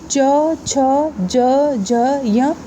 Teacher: जब बोलेंगे च छ ज झ य तो बिना जीभ तालु के टच किए आप नहीं बोल सकते हैं, इसलिए इसे तालव्य व्यंजन कहते हैं।